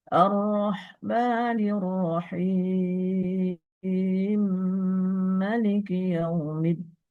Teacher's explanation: Mim ketemu dengan mim bertasdid. Sehingga harus ada tempo gunahnya agak lama. maal gunahnya lama. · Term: idghamul mim fil mim, idgham kabir